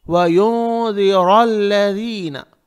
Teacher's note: ذی نہیں کہیں گے، ذی نہیں، ذی. اور نون کو ناک میں چھپائیں گے